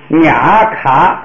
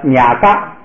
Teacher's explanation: 第2不用送气了，变成不送气，就变成了嘎。